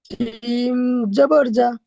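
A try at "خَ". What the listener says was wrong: জিম নয়, খ। জিমের নোক্তা নিচে থাকে না, পেটে থাকে। এটা উপরে মাথায় নোক্তা আছে, খ।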